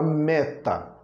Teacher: é a sílaba mais forte a primeira sílaba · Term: sílaba tônica